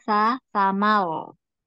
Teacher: sa jangan tebal sa ujung lidah nempel di seri depan